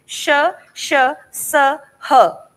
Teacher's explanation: आप जबान बोलते टाइम अपने बहुत करीब अगर हाथ को रखेंगे तो आप महसूस कर पाएंगे श श स ह, ऐसा जब आप क्रिएट करेंगे साउंड तो आपको गर्म हवा मुंह से बाहर निकलती महसूस होगी, इसीलिए इन्हें ऊष्म व्यंजन कहते हैं, ऊष्म मतलब गर्मी।